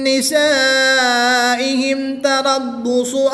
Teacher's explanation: الف مدہ کے بعد حمزہ اسی کلمے میں ہے تو یہاں پر مد متصل ہوگی، 3 سے 5 الف تک کھینچ کر پڑھیں گے۔ میم ساکن کے بعد حرف با اور میم کے علاوہ حرف تا ہے تو یہاں پر اظہار شفوی ہوگا، یعنی کہ میم کو ساکن کو خوب ظاہر کر کے پڑھیں گے۔ را ساکن سے پہلے حرف پر زبر ہے تو اس را کو پر یعنی موٹا پڑھیں گے۔